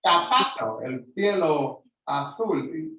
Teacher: el español pone la lengua detrás de los dientes de arriba y hace casi como zapato, el cielo azul, casi, pero un poquito más agudo.